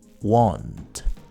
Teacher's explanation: In British English, this word is pronounced with a long O sound. Want. In American English, however, it's more of a weak O.